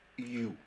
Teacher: Y en el caso de yu, como la U es el sonido fuerte, está el acento ahí, no se dice IU, sino que se dice yu. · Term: semivocales